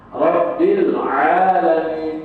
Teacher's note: jangan tebal karena ain itu huruf tipis.